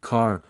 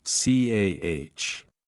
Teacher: the R sound is pronounced strongly in American English but is often softer or omitted in British RP, especially at the end of words, e.g., car versus CAH.